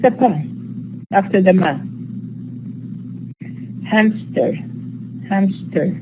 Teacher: The pa here is inserted, it's a bilabial consonant because the preceding sound is bilabial. So for the ease of articulation, it's easy to insert the pa here.